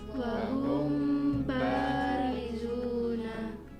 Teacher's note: Wahum harus langsung membentuk ba mulutnya ketika masuk ke huruf mim. Kalau tidak langsung membentuk ba nanti jadinya mendengung ya. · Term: ikhfa Syafawi